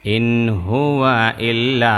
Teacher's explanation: ইল্লার মধ্যে লাম মোটা এক আলিফ টান